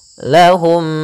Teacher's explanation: yang satu mim sukun yang satu mim berharakat maka caranya adalah masukkan mim yang pertama kepada mim yang kedua kemudian ditahan gunahnya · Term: Idam Mimi